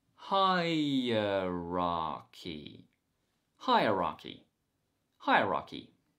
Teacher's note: improve your accent and today's word is hierarchy hi-raki hi-ra key the stress is on the first syllable